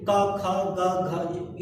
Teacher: निश्चित रूप से कहीं सटे रहते हैं, कहीं स्पर्श किए रहते हैं, इसीलिए इनको स्पर्श व्यंजन से क ख ग घ ये कंठ से निकल रहा है।